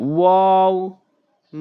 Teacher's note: ওয়াও মুখ গোল করে মুখের খালি জায়গা থেকে ওয়াও